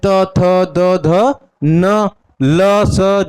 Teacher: उच्चारण कहां से करेंगे हम दंत से